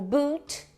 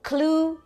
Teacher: o u que é bem parecido com o nosso u do português de uva só que ele é um pouquinho mais longo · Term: vogal longa